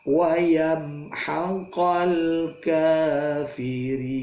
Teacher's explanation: kafirin ka dua ketuk ri itu ada ya dan nun nah, ditutup dengan waqaf dan mad di akhir waqaf itu mad arid boleh dibaca sangat panjang